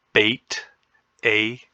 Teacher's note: the mid front vowel is Bait